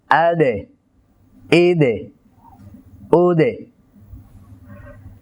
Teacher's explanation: দাল আমরা যখন সাকিন উচ্চারণ করব কলকলা করব তখন তার আওয়াজ নিচের দিকে আসবে · দুই নাম্বার হচ্ছে তার সিফাতের মধ্যে গুরুত্বপূর্ণ সিফাত হলো সিদ্দাত। অর্থাৎ খুব শক্তভাবে জিহ্বার আগাকে সামনের উপরে দুই দাতের গোলার সাথে লাগাতে হবে। তিন নাম্বার হচ্ছে এই হরফটি উচ্চারণের সময় আরেকটি সিফাত আছে কলকলা।